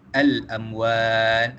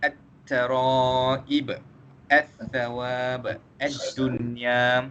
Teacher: Jadi kita tak baca alif lam tersebut, kita tak baca jelas alif lam tersebut, seolah-olahnya kita terus masukkan huruf yang pertama dengan huruf yang ketiga. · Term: alif lam syamsiah